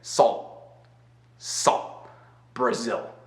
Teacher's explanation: o L tá feito aqui, bem atrás na boca, quase na garganta, na verdade. Então, dá para colocar a mão, sentir a vibração.